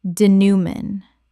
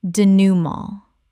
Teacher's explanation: Three syllables with a nasal final syllable inherited from French.